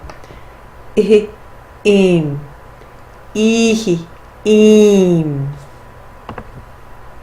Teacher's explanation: I want you to hear the nasalization with the Anusvara